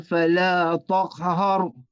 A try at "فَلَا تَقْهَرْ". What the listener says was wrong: Hindi siya to. Hindi siya to. Manipis yung ta. Hindi siya toko. Nagiging to yung ta.